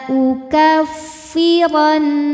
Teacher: huruf ro dibunyikan secara tafkhim sebab berbaris fathah maka kita bunyikan dengan [Musik] tebaluk lalu nunnya gunah musyadadah karena